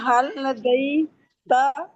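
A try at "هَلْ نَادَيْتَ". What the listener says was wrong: नादैतुल्लाह, नादैतुल्लाह, नदई नहीं कहेंगे ना, नादई कहेंगे। ये है लीन यहाँ पर हो रहा है, ठीक है। इस ना को पूरा ना पढ़े, जैसे हम कहते हैं ना, ये वो वाला ना पूरा पढ़े। ना दईता, दईता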